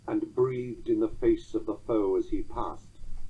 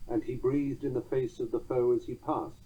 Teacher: the clipping causes us to linger a tiny bit longer on the word breathed than we would in strict anapestic rhythm